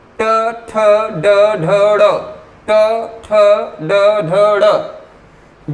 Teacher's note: जैसे ही आप ट वर्ग की बात करेंगे ये आपकी जीभ पीछे की तरफ पलट जाती है। जीभ का पीछे की तरफ पलट जाना इस बात की तरफ संकेत करता है कि वो मूर्धा है।